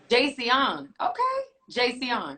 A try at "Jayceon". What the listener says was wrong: Yeah, but don't say it like a 5th grade school teacher. Like you did something to somebody. Just chill, let it flow.